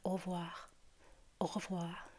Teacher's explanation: many French people, when they say au revoir, they make it flow kind of like as if it were one word